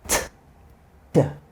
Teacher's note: position is the same, but we add voice to make a d.